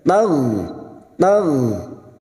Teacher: Wa in taghfir, tagh, huruf ghain, hati-hati memantul karena bukan qalqalah. Huruf ghain yang memiliki sifat rikhwah dan jahar.